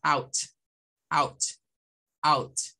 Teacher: suena como una A con U, pero la A suena más que la AE. O sea, este sí es A, muy abierto, AU, AU, AU. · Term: sonido AU